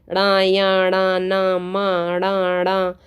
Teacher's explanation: वर्ग का जो व्यंजन होते हैं उन पांच वर्ग होते हैं पांचों वर्गों का अंतिम जो पंचम वर्ण होता है पांचवा वर्ण वो नासिका से बोला जाता है